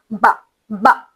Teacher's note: با با، اسے ہم جھٹکا نہیں دیتے بلکہ نارملی بس با، اور اس میں شدہ یعنی آواز کا راستہ مکمل بند ہوتا ہے اور پھر کھلتا ہے۔ جب آپ دونوں ہونٹ کو ملائیں گے تو راستہ بالکل بند ہو جائے گا، پھر وہ دوبارہ کھلے گا تو راستہ مکمل بند ہوتا ہے اور پھر کھلتا ہے، اور ساتھ ہی ساتھ آواز نکلتی ہے، سانس نہیں نکلتی۔